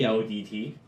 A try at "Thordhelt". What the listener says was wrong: was no D at the end, but yeah, Thordhelt. Thordhelt.